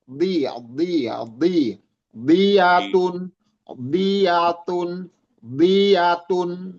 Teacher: sisi lidah, kiri kanan lidah, bertemu dengan gigi geraham atas.